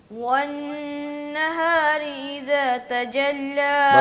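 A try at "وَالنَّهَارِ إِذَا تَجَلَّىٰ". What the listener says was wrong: بس تھوڑا سا نا ٹھہر کے پڑھا کرو, ٹھہراؤ پیدا کرو اس میں.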